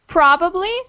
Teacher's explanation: There's a definite emphasis on the first syllable in probably.